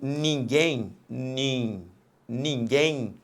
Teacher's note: quando eu falo ninguém, ninguém, neste finalzinho aqui, repare que eu falo um i. Eu não falo ninguém. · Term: ditongo fonético